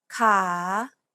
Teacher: and repeat after j the fourth tone is a rising tone it starts low and then rises to a high part of your range